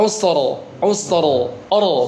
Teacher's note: Dan ketika kita sudah sudah belajar tafhim tarkik ya, bahwa ketika ada ro sukun sebelumnya sukun sebelumnya ada ee domah atau e fathah atau domah maka dibaca tebal kan. Jadi alusr ketika waqaf dibaca rnya dibaca tafkhim atau tebal